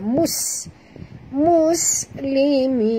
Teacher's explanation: Huruf sin dah bila dia mati, sahabat, kena jaga sofirnya.